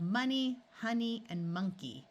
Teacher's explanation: the O is going to schwa and sound like a short U